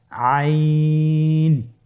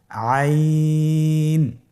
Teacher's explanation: আইন হরফটি কণ্ঠনালীর মধ্যখান থেকে উচ্চারিত হয়।